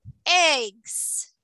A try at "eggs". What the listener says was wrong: So I really want to hear you say the S. One egg, two eggs.